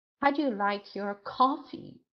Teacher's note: so stress is on coffee